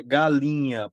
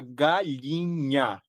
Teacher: Nós não falamos o som do nh na nossa região. A gente cria uma semivogal. Então a gente fala galinha.